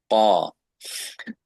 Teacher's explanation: তার মানে আমাদের ক সামনে, আর আরবি ক হচ্ছে পিছনে, সবচেয়ে পিছনে, জিভার পিছনের অংশ।